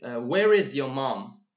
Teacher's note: Okay, so the stress here is where and your mom. I am stressing on where and mom because I want to know.